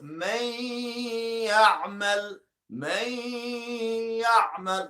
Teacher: Here, we have to merge this idgham, this nun, to ya.